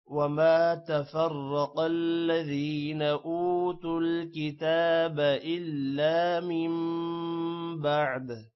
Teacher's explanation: را موٹا ہوگا، قاف بھی موٹا ہوگا اور الا الف آ رہا ہے اس وجہ سے لا تھوڑا سا لمبا ہوگا